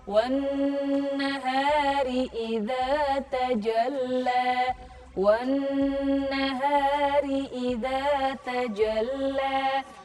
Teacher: Wan nahari nun, di situ ada nun bertasydid wan nahari, maka membacanya dengung.